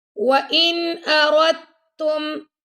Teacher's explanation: نون ساکن کے بعد آ گیا حمزہ، تو یہاں پہ ہم اظہار کر رہے ہیں